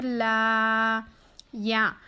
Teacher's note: لام کو ہم باریک پڑھیں گے۔ لام پر کھڑا زبر آیا ہے، برابر ہے حرف مدہ کے، تھوڑا کھینچ کر پڑھیں گے